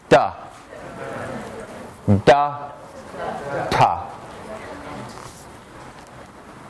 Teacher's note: it's an alveolar stop it's non-nasal but this one is voiced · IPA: [d]